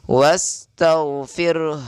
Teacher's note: Jangan cuma baca rnya Tapi ha-nya kedengaran juga